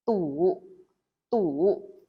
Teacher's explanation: Next one we have u, u, another round shaped vowels. Remember to say u with your mouth round.